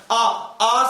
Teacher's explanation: मुख सर्वाधिक खुला रहता है, सबसे ज्यादा खुला रहता है। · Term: विवर्त स्वर